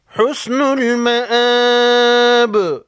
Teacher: وقف کی صورت میں جب با ساکن ہو جائے تو با کو ہلا کر پڑھیں گے